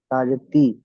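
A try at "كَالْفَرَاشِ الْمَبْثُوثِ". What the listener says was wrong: এটা তা নয়, এটাও সা, সাজের সি।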